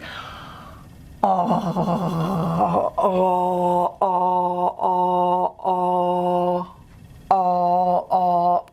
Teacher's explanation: this is a low vowel, and it needs to be really back, and it's into the pharynx. So you can do the old gargling to feel where our tongue root goes to our pharynx. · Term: Cardinal Vowel 5